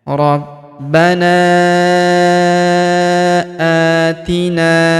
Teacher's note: Huruf A kita panjangkan dua harakat karena terdapat alif kecil di atasnya yang ini. Atina huruf na kita panjangkan dua harakat karena terdapat alif di depannya.